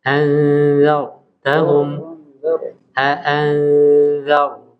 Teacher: Jadi huruf ro-nya di sini tafkhim. Ya. Anzartahum.